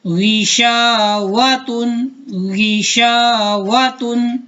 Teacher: واو پر ہونٹ گول ہوں گے